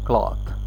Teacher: cloth, they say it cloth, little bit more open, not round as in RP